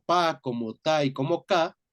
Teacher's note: la pa, la ta y la ka, que son sonidos oclusivos sordos